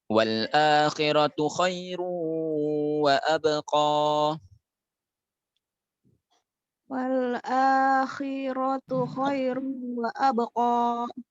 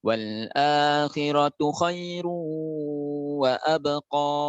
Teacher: khairu wa abqa itu ada idgham bi gunnah di situ, agak panjang kan dikit Bunda.